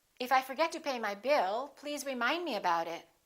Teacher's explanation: In that sentence, we have two focus words, bill and remind.